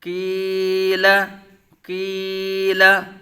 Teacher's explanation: یا زیر کی، لام زبر لا، کیلا کیلا، قاف مستعلیہ متحرک، یا ساکن سے پہلے زیر یا مدہ، کی ایک الف دو حرکات کے برابر کھینچ کر پڑھیں گے ، لام متحرک بغیر کھینچے بغیر جھٹکا دیے، کیلا کیلا، حا